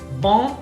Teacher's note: entonces en francés la N lo que te va a indicar es nasalización.